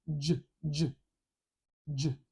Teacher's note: a voiced sound and this J here is a voiced sound I have vibration in my throat when I say this word